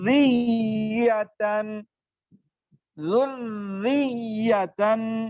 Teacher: پہلی را ساکن، دوسری را متحرک بھی مکسور. تو پہلی را مدغمہ دوسری را کے تابع ہوگی تو را مکسور باریک پڑی جاتی ہے. تو یہاں پر را جو ہے وہ مشدد باریک پڑی جائے گی اور ہم اس کو پڑھیں گے ذریتن ذریتن، ٹھیک ہے. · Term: رائے مشدد